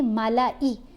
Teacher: لام کو آپ نے لمبا نہیں کرنا, بلکہ ملائی, لام کی علیحدہ آواز ہے, حمزہ کی علیحدہ آواز ہے